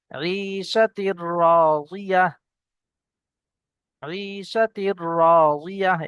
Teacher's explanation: আর তানবিন বা নুন সাকিনের পরে লাম এবং র আসলে গুন্না না করে বিনা গুন্নায় র এর সঙ্গে তানবিনের সঙ্গে মিলিয়ে পড়তে হয়।